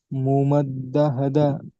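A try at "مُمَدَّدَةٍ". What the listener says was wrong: দাহ দা নয়, দা দাহ। মুমাদ্দা দাহ। মুমাদ্দা দাহ। প্রথমে দাল জবর দা হবে, তারপরে দাল হা জবর দাহ। দা দাহ। খেয়াল করবেন, দাহ দা, প্রথমে দাল হা জবর দাহ না যেন হয়ে যায়, খেয়াল করবেন।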